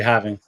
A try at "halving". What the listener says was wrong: It's halving, right? Because it's the L right there, so it's yeah.